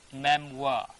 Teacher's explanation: We can find here memoirs, but real pronunciation is memoir. R is not sounding here.